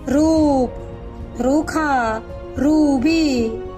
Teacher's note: दीर्घ स्वर है, तो इसको खींच कर बोलना है, दोगुना का समय लगना है।